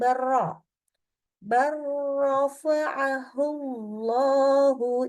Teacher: langsung dari kalau misalkan nih lam sukun ketemu ro ber J lamnya melebur langsung ke ra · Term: Idam mutaqibain